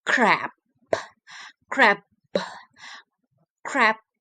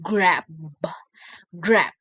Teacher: This pair of words demonstrate how the single difference in voicing between the k, k is a voiceless velar and a stop or plosive, and g, g is a voice, a velar, a stop or plosive.